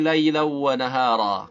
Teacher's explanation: Nah, ini panjang 2 harakat. Laylan, ada gunnahnya gunnah idgham karena bertemu waw